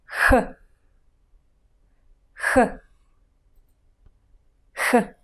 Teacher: It's produced by the back part of the tongue touching the soft palate.